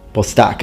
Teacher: he chooses not to pronounce the h usually in classical latin the h is pronounced particularly if it's at the beginning of words but in this case it's absolutely fine not to pronounce it